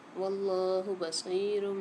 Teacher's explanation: یہاں پر لام کو کھینچ کے بھی پڑھیں گے، موٹا کر کے بھی پڑھیں گے